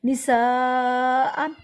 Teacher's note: سا کو لمبا کیا، اس پہ بڑی مد ہے، بڑی مد کو 3 الف کے برابر لمبا کیا جاتا ہے